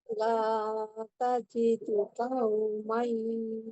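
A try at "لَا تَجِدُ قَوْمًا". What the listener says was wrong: Qau. La tajidu qau. Bukan ka, tapi qau. Tebal.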